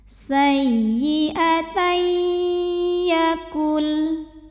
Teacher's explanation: sekali lagi jangan ditahan cukup pakai number ini namanya Idgham Bighunnah karena ada tanwin fathah menghadapi huruf ya maka tanwinnya masuk ke ya beserta disertai dengan dengung